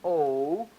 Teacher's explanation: Woo, woo, or ooh, where you saw more rounding. O, more rounding as my tongue is rising back there